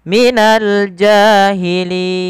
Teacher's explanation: ketika kita wakafkan huruf akhirnya yang mana sebelumnya ada huruf mad maka bacaan linnya kita boleh panjangkan dua harakat boleh empat dan boleh pula enam harakat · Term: Mad Dikun